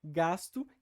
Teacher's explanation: essa palatalização do S acontece categoricamente ou seja de forma mais regular e mais consistente no na Coda silábica que tá interna ou seja dentro da palavra e não no final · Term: chiado